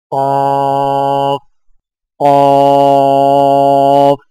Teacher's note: قاف کی ادائیگی میں زبان کی جڑ کو کوے کے متصل تالو پر لگا کر موٹی آواز میں پڑھیں